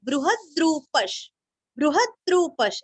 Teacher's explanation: बृह के ह के ऊपर आघात देना है